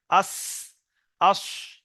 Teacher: এতক্ষণ শুধু লাগছিল উপরের দাঁতের, এবার উপরের নিচের আগা। আজ, দেখেন চারটে দাঁতের আগায় আপনার জিভের আগাটা লাগছে। আস, আস, ওই জন্য সিটি টাইপের আওয়াজ হচ্ছে।